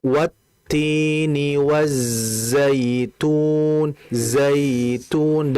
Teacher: Sifat huruf za itu kan diantaranya adalah mengalir dan juga dia sofir sifatnya. Sofir itu berarti kalau kita bahasakan itu sama kurang lebih seperti hamas.